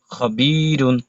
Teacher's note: লাম জবর লা, তয়া জের তি, ফা দুই পেশ ফুন, লতিফুন, খ জবর খ, বা ইয়া জের বি, র দুই পেশ রুন, খবিরুন। তানবিনের পরে খ আসছে, এই জন্য আমরা ইজহার স্পষ্ট করে পড়তে হবে।